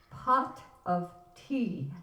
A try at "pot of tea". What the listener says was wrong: Now, say that with less jaw action. Pot of tea.